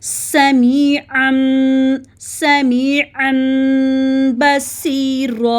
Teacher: नून साकन की आवाज़ को मीम में बदल के पढ़ना है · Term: इकलाब